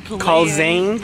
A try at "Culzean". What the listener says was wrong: No, you don't say the Z.